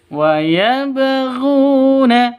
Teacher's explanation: Ru panjang dua ketukan karena ada wawu mati diawali dengan dhammah.